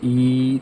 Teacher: आप बोल कर देखिए ई, तो देखिए आप गले के मुंह के अंदर तालु के पिछले हिस्से पे हल्का सा जोर लगा रहे हैं और बड़ी ई का उच्चारण निकल रहा है